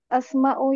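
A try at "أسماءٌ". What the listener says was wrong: tanwin, tanwin.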